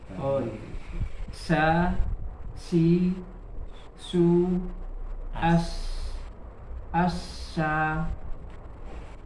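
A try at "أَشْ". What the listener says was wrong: sudah hampir tapi kayak kurang kurang nyebar anginnya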